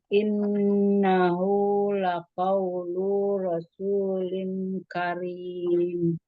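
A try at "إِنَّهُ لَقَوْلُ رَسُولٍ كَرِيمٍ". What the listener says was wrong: Lu-nya jangan panjang.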